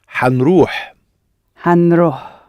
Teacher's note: See, the I has almost dropped out, and the n has sort of attached itself a bit